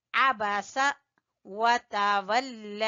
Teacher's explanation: لام کو کھینچیں گے کھڑی زبر کی وجہ سے بھی، اور اوپر مد ہے، مد جائز، مد جائز کی وجہ سے بھی اس کو کھینچیں گے۔